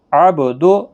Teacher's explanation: با ساکن پر قلقلہ ہوگا